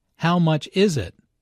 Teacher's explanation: notice that the main sentence stress falls on is in this question